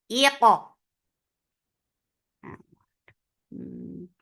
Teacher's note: Hamza is sharp, focus, give E sound attached with Qaf. Qaf will get sifa of qalqalah and Qaf will be heavy. Iqa. It will get qalqalah.